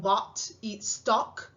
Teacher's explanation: Luego tienen una O, que le damos una O abierta como en bot y stock